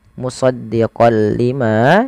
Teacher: memasukkan huruf tanwinnya kepada huruf lam